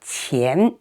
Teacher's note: 钱, this one is the second tone. Okay, go up 钱. And if you are learning Chinese characters, look at this Chinese character.